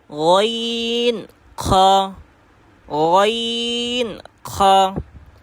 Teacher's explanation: 3 নম্বর মাখরাজ হলকের শেষ হইতে